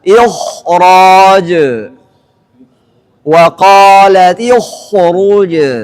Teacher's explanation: setelah huruf kha sukun yang didahului kasrah tadi ada huruf ra, maka kha-nya kembali ketebalannya sebagaimana biasanya, sempurna lagi